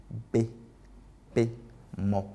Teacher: Bilabiales parce qu'elles font intervenir en fait les deux lèvres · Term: consonnes bilabiales